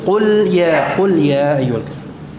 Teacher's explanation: Qaf ini pengucapannya majhurah, tertahan udaranya.